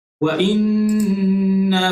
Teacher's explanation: nun yang bersabdu itu wajib al-gunnah, maka kita kena baca dengan kadar gunnah, dengan dengung sebanyak 2 harakat.